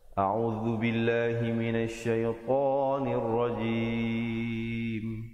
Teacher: To nir rajim, nun baris bawah terus naik di atas ra, dan kemudian jim berbaris bawah. Diakhiri dengan ditutupkan rapat mulut menyempurnakan bunyi mim.